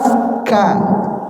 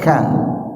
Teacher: Kaf ini tidak termasuk huruf qalqalah, tapi dia ketika mengucapkan keluar hawa, ka ya.